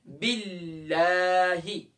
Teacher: اب دیکھیں باللہ میں اللہ کے لام کا یہ رول ہے کہ جب بھی اللہ کے لام سے پہلے زبر ہوگی، پیش ہوگی، تو اللہ کے لام کو ہم موٹا کر کے فل ماؤتھ کر کے پڑھیں گے. لیکن جب اللہ کے لام سے پہلے زیر ہوگی تو ہم وہاں پر اللہ کے لام کو لائٹ کر کے پڑھیں گے